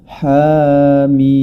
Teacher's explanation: Kemudian huruf mim yakni mad lazim musaqqal harfi ini dibaca dengan 6 harakat. Jadi ha-nya 2 harakat adalah mad tabi'i harfi, kemudian mimnya tergolong dalam mad lazim musaqqal harfi yang dibaca dengan 6 harakat.